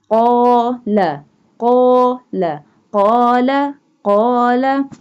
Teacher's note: We join these two sounds qala, qala, qala, qala. Alif has no sign, no harkat, so it mixes with qaf and we stretch qaf a little bit. Qala, qaf, alif, fatha, qa, lam, fatha, la, qala.